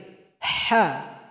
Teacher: Di mana keluarnya itu tenggorokan pertengahan jadi bunyinya seperti orang kepedasan makan cabe ha juga ada suara nafas yang mengalir ha hi hi [Musik] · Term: huruf ha